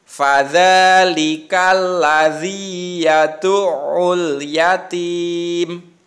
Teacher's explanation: Karena berhenti maka ma-nya disukun atau dimatikan.